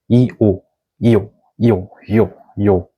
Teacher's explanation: for yo, it is combination of I and O sounds